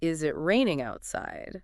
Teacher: my voice would naturally go up a bit at the end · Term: rising intonation